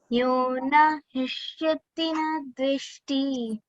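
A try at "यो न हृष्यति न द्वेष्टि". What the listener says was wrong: Don't elongate dveshti like that, okay? Yona vrushyati na dveshti.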